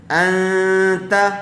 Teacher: حروف اخفا کے 15 حروف میں سے ایک تا بھی ہے، تو نون ساکن کے بعد حروف اخفا میں سے یہاں تا آیا ہوا ہے، اس لیے غننے کے ساتھ اخفا کر کے پڑھیں گے۔ ان، تا زبر تا، انت، تا کے اوپر زبر ہے اس لیے اس کو جلدی پڑھیں گے، کھینچیں گے نہیں۔